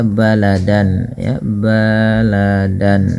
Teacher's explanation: baladan jelas n-nya karena bertemu dengan Hamzah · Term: izhar halqi